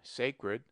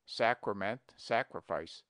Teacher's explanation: and sacrifice with a very long a but analogies against him we pronounce sacred with a long sacred but the derivations are properly pronounced with a short Sacrament sacrifice